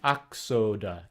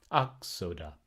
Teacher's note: X is a compound sound. It makes a k and then a s. So this would be the back A, K-S-O-D, schwa.